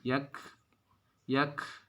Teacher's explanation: harokatnya sukun ya, itu dibaca desis